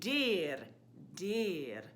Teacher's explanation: on the vowel E, very closed sound